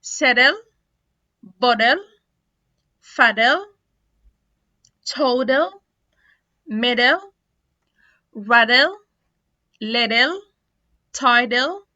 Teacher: لما بيكون تي vowel plus L أو T L plus vowel، ده كده ساعتها هيتنطق D